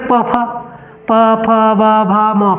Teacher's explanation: पांचों वर्ण जब पढ़ते हैं ना तो हमारा होठ सट जाता है आपस में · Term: ओष्ठ